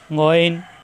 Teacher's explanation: গইন মোটা হরফ কণ্ঠনালীর শেষ অংশ থেকে